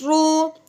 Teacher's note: رو کو پر پڑھیں گے کیونکہ رو کے اوپر پیش ہے، رو کے اوپر زبر یا پیش آ جائے اس رو کو پر یعنی موٹی کر کے پڑھتے ہیں